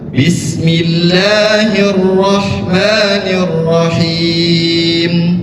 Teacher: ketika kata Allah dipanjangkan itu salah. Nggak boleh lebih daripada 2 harakat. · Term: mad tabi'i